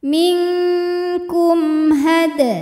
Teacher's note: Kum, ada hukum izhar syafawi karena mim sukun menghadapi huruf selain mim dan ba yaitu ha, maka cara bacanya mim dibaca jelas.